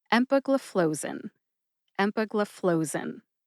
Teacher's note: Emphasize M and FLOE. FLOE gets the most emphasis.